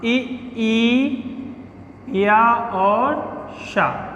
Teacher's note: ई, या और शा का भी उच्चारण क्या होता है, तालव्य से होता है।